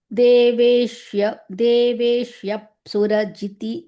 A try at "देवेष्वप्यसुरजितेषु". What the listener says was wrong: देवेष्यप्य Not yakara, it is vakara.